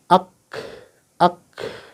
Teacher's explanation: Sifatnya dia pertama al-hamas ya. Ada udara yang keluar. Ak ya. Kemudian yang kedua asyiddah, tertekan.